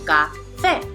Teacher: Here we have the word café, and as we can see, it has 2 syllables, which are café. We can also see that the stress falls on the second syllable, café.